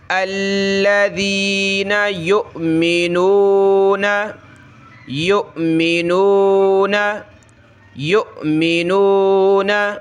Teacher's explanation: الذین یؤمنون، یا حمزہ پیش، یو جھٹکا دیں گے واو کے اوپر جو ہے حمزہ ہے، یعنی حمزہ ساکنہ کہلاتا ہے یہاں پہ. تو حمزہ ساکنہ کو جھٹکا دے کر پڑھا جاتا ہے.